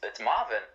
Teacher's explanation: we don't roll the R as much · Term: rolling R